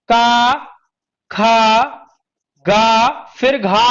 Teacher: का वर्ग के सारे उच्चारण स्थान क्या है साहब? कंठ है।